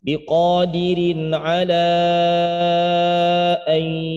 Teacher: Maka terbaca pada kata ala ini biasakan dengan 4 harokat.